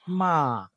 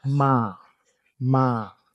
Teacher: The mid-tone is the one that's like flat. It's usually like flat and dragged out.